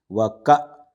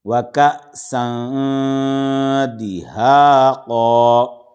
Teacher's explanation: حمزہ ساکنہ کے پڑھنے میں جھٹکا کریں گے، جھٹکا دیں گے